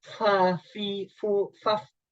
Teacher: ketika menyebut huruf fa, gigi seri ini yang atas ke perut bibir bawah itu ditempelkan. Fa, fi, fu, faf.